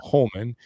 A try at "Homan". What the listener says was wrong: I think he pronounces it that way, even though it's Homan. There's no L. even a silent L. It's just no L.